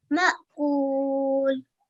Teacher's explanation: So as everybody else has also listened, mashallah, has very correctly pronounced those quiescent alif and hamza. So there was no ayn sound, and mashallah, it was a soft jerk from the bottom of the throat.